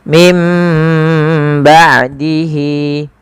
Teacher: Cara membacanya yaitu suara nunnya diganti menjadi suara huruf ba. Awalnya min, maka diganti dengan mim, ya, maka menjadi mim, ya, maka ditandai dengan mim kecil di atasnya agar dibaca dengan huruf mim. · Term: iqlab